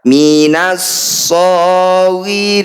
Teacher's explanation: Alif kemudian lam dan diikuti tanda tasydid. Ini disebut bacaan idgham syamsiyah atau alif lam syamsiyah. Alif dan lamnya diabaikan, tidak usah dibaca.